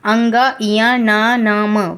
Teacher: इसका आप उच्चारण स्वयं करके देखेंगे तो आपको पता चल जाएगा कि इनकी ध्वनियाँ नाक से उच्चारित हो रही हैं। इनके उच्चारण में श्वास जो वायु है वो नाक से होकर निकलती है, जिससे ध्वनि का नासिकीकरण होता है।